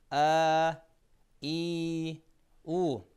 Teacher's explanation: Бул 3 тыбыш ооз жана алкым көңдөйүн чыккандыктан тәжвид илиминде аль-хуруфул жауфия, көңдөйлүк тыбыштар деген лакап менен да таанымал. · Ал тыбыштар созулма болгон алиф, вау жана я тыбыштары. Жана бул тыбыштар айткан учурда өпкөдөн келаткан аба эч бир тоскоолдукка учурабагандыктан сыртка эркин жана бош чыгат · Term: созулма тыбыш